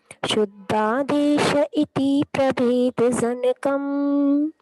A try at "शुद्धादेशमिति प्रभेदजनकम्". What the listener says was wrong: इति नहीं है, मिति लिखा उसमें आप। अच्छा, आपके में इति है पुस्तक में, ठीक है।